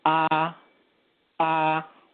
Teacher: I'm going to use A, the English alphabet A, and I'm going to just say the straight tone or the first tone in Mandarin, and that's A.